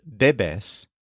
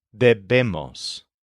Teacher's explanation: the stress is on the first syllable, deb, except for the we must conjugation, where the stress is on the second syllable, debemos.